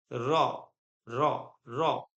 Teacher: आप रॉ बोलोगे ना तो आपकी जीभ ऊपर ऐसा लग रहा है टच हो रही, लेकिन हो नहीं रही। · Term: अंतस्थ